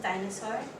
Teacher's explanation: Likewise with dinosaur, the pattern is strong, weak, strong. The child would omit the middle syllable and pronounce dinosaur, disaur. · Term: weak syllable deletion